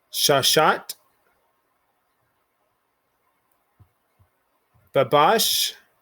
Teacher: you want to emphasize the second syllable or the ending syllable